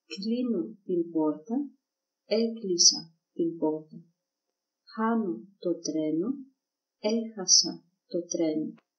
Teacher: You can notice too that the accent moves always one syllable backwards.